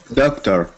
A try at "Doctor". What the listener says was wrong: Yeah, it sounds a bit French because I think the sound needs to be opened a bit like oh.